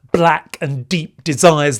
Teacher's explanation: there are these heavy plosives, 'black and deep desires'. The b sound, the d sound